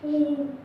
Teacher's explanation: तो आप इसको उच्चारण करके देखेंगे ऊ, इसमें हमारे ओंठों का काम, ओंठ से हवा निकलती है, इसमें ना जीभ होता है ना तालु, किसी का कोई लेना देना नहीं, ओंठ विशेष तौर से होते हैं। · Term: ओष्ठ